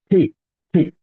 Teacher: দুই ঠোঁট একসাথে করে একটু বাতাসের সাথে ধাক্কা দিব